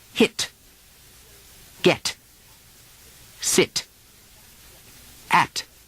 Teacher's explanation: We'll often say hit, get, sit. The English do a complete explosion on those sounds. · in standard American dialect the tea doesn't explode much at the end of words